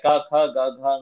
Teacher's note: ಕ ಖ ಗ ಘ ಅಂದ್ರೆ ಉಚ್ಚಾರಣ ಸ್ಥಾನ ಸೇಮ್ ಇದೆ ಕಂಠನೆ